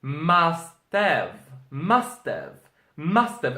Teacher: So it's like a shorter version. It's like those words are joined together and it's a lot faster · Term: connected speech